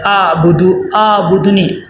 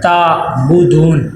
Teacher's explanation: عین کی آواز صاف ہو، حمزہ نہ بنے